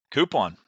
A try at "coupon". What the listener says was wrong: No, it is not coupon. It is coupon. There's no Q. says coupon.